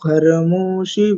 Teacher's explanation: कहीं कहीं सी की जगह शी जैसा सुनाई दे रहा था